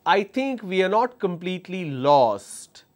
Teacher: when I say lost, I paused a little bit and I went flat.